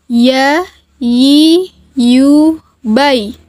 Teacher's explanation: huruf ya keluar dari tengah lisan disentuhkan dengan langit-langit